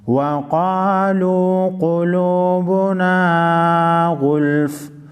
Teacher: क़ुलूबुना, गैन लाम फेश गुल, फ़ा दो फेश बुन, गुल्फ़ुन। वक़फ़ की सूरत में फ़ा साकिन पढ़ा जाएगा।